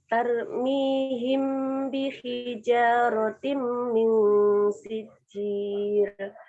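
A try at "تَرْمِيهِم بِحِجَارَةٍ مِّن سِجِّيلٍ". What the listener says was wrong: Yang tengah kurang panjang dikit.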